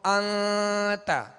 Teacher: تو انت یہ اخفا کا غنہ ہے، یعنی ناک میں آواز کو ہم نے چھپایا، ناک میں آواز کو ظاہر نہیں کیا